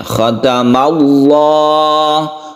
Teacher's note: lafadz jalalatul jalalah membacanya kalau sebelumnya fathah maka dibaca tebal atau tafkhim ya khatam Allah kata Allah tafkhim ini lafadz Allah yang dibaca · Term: lam jalalah